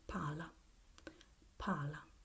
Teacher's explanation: You see, you hear a very short vowel, palla. While when we have the single consonant, we tend to have the vowel preceding it a bit longer